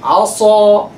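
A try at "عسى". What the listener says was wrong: No. Keep the lower lip down, huh?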